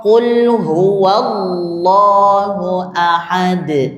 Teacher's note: itu fathah yang mengawali lafaz Allah. Bacanya tebal.